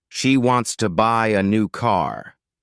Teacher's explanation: the main stress falls on wants buy new and car the other words she to and a are less emphasized if you stress every word equally it sounds forced and unnatural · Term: sentence stress